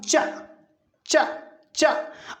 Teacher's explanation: जब च उच्चारित करते हैं तो जीभ तालू से लगती है। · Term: तालव्य